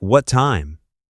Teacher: The two T sounds become one